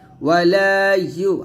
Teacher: ইউ উচ্চারণ করবেন জিহ্বার মধ্যখান উপর তালুর সঙ্গে লাগিয়ে উচ্চারণ করবেন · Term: ইয়া পেশ ইউ